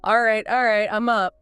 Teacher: the repetition of all right with that slightly drawn out, reluctant tone that instantly conveys his feeling not happy about waking up. · The T in all right is probably very soft or even dropped.